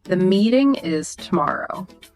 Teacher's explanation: Hear how your voice naturally falls at the end. It's final, definitive.